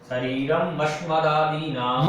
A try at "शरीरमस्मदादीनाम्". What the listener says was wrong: मस्म, शरीरम और फिर मस्म, दो बार म लिखा है। शरीरम अस्मदादीनाम।